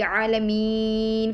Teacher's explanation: क्योंकि यहाँ हरूफ मद्दा है और वक़फ़ करने की सूरत में सुकून आर्जी तौर पे है, तो इस वजह से हम इसको लंबा करेंगे। इसकी मिकदार में भी जो है वो यही है कि 3 अलिफ़ और एक कौल के मुताबिक 5 अलिफ़ भी कर सकते हैं।